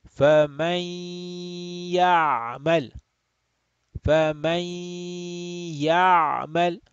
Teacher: So again, we will have idgham bi gunna here. Idgham with stretching of the nasal sound.